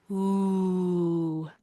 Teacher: our lips are rounded and extended.